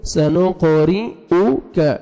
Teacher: را کسرہ، را باریک پڑھیں گے